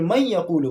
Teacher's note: من یقولو ہم نہیں پڑھیں گے بلکہ میں یقولو پڑھیں گے، نون کو یا کے ساتھ ملائیں گے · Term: ادغام